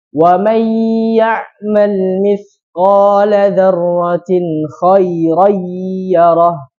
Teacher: dimasukkan ke huruf setelahnya, maksudnya setelah nun sukun atau tanwin dengan gunnah, dengan dengungan di makhrajnya, itu hidung. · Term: idgham bi gunnah